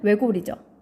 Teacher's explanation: 리을 시옷 겹받침이다 보니까 시옷은 떨어지고 탈락하고 리을만 남죠. 자음군 단순화에 의해서요.